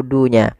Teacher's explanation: 'Dun' bisa dua harakat, empat harakat, atau bahkan enam harakat.